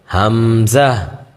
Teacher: হামজা বলার সময় শেষে একটু হা উচ্চারণ হবে